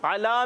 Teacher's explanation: आइन की अदायगी क्लियर होनी चाहिए हलक के दरमियान वाले हिस्से से